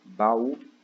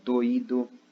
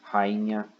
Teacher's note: Ele é uma separação imediata entre duas vogais, né? Ele é um encontro de dois sons vocálicos, mas que na verdade eles são pronunciados separadamente.